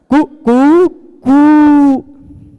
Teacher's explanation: पहले बार ह्रस्व रहता है, उसका फिर दीर्घ रहता है, फिर प्लुत रहता है